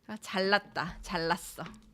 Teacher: 니은 neighboring 리을 becomes 리을 for the convenience of pronunciation.